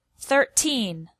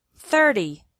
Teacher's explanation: This shows why it's important to put the stress on the correct syllable. In 13, the stress is on the second syllable, and in 30, the stress is on the first syllable.